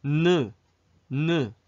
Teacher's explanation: 혀끝이 잇몸에 닿는 거 느껴지죠? 이빨 뒤쪽으로. 느. 자, 이렇게 되니까 혀끝이 위로 올라가면은 나머지 부분들은 자연스럽게 밑에 있죠?